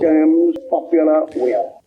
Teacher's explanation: He doesn't have R sounds in the word terms or popular will.